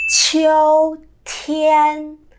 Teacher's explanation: Cái âm yêu đọc nó rất là tròn